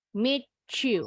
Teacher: Nah, T ketemu Y, bunyinya jadi CH.